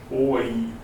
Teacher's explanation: starts at o, ends in e. That's a diphthong.